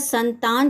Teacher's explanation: अगर संतान शब्द है तो इसमें ता पर विशेष बल दिया जाएगा। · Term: बलाघात